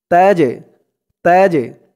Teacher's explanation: এই জিমটা হচ্ছে কলকলার হরফ ধাক্কা দিয়ে পড়তে হবে